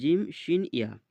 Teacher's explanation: জিভের মাঝখান এবং তার বরাবর উপরের তালুর সাথে লাগিয়ে উচ্চারিত হয় জিম, শিন, ইয়া